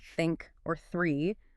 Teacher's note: the unvoiced one like in think or three which is just air. For many non-native speakers, these sounds are incredibly hard to produce correctly because their native language just doesn't have them.